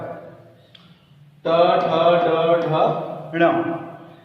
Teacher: इस टवर्गी व्यंजन का उच्चारण स्थान है मूर्धा